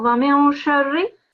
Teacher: You don't pronounce the noon, you hide it in your mouth and make a nasal sound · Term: ikhfa